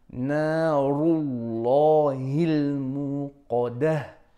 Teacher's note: Ra here is heavy. The lam of the word Allah is heavy, and qaf is heavy. Narullahil muqadah.